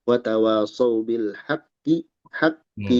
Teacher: Kita hanya menghentakkan di tasdid qaf ya.